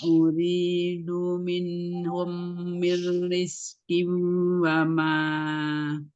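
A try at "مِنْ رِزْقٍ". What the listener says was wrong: Itu digunakan dulu min mir rizqiu, itu mim sukun ketemu dengan mimnya, gunanya kurang tadi.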